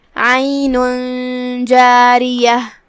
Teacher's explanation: اخفاء کا معنی ہے چھپا دینا، تو ہم یہ تنوین کو بغیر ظاہر کیے ہوئے چھپاتے ہوئے یہ حکم کو ادا کریں گے · کلمت عین میں یہاں حرف العین ہے، ہم اسے حلق کے درمیان والے حصے سے ادا کریں گے